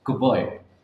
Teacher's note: The D in good becomes B due to the following B.